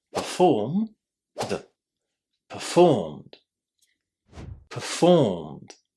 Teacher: we don't add any extra syllables, so we just add the d to the infinitive. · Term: ed ending